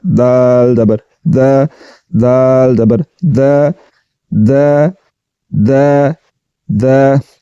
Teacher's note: اب دال کو پڑھتے ہیں باریک کر کے اور زبان کی نوک کو ثناء علیہ کی جڑ کے ساتھ لگاتے ہوئے دال زبر دا، دال زبر دا دا دا دا۔